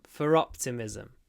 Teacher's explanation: for optimism we do pronounce the r because it comes before a vowel